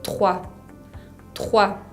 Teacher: Uso ese R de la garganta, como les contaba, trois, con la combinación O-I.